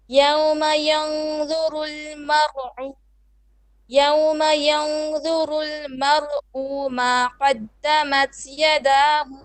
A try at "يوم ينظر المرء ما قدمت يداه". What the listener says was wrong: So 2 mistakes. One, mar'u, don't stretch it. ينظر المرء ما قدمت يداه. Now here, if you're pausing, you cannot say yadahu.